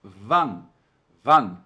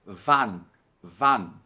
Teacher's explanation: No alemão aqui é a, não é an, como a gente tem a tendência de fazer no português. Então cuidado para não dizer van, mas sim van.